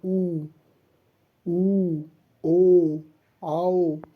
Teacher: वृत्ताकार स्वर क्योंकि इसको जब हम आप उच्चारण करेंगे इसका तो मुख जो होता है, मुख वृत्त की तरीके से, मुख जो ओष्ठ है वृत्त के तरीके से बन जाता है, इसलिए इसे वृत्ताकार स्वर कहते हैं